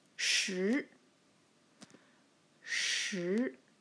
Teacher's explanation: that's the rising tone the second tone